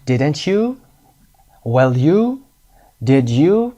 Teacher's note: rising intonation ها به این شکل هست didn't you، will you، did you، صدا به سمت بالا میره